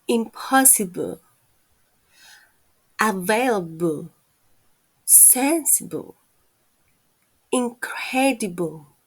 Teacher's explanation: we can find the schwa sound in the words which ends in able